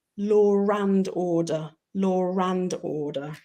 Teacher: law and order, we actually add the letter R